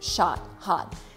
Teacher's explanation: So the O in the word is pronounced as ah, shot, hot.